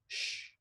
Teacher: It's a stretched out S. It's a post-alveolar, or what we would call an alveopalatal, often fricative, sh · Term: the sh sound